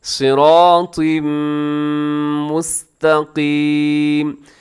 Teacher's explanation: قاف کو موٹا پڑھنا ہے · ہو رہا ہے، تنوین کے بعد صراط کے نیچے تنوین ہے، تنوین کے بعد میم یرملون کا ادغام ہے، تو غنے کے ساتھ